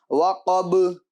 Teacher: با حروف قلقلہ میں سے ہیں تو اس کی آواز بھی پھر لوٹے گی جب وقف کریں گے